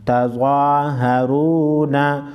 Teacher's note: ज़वा को मोटा पढ़ेंगे और रा को पेश की वजह से मोटा पढ़ेंगे।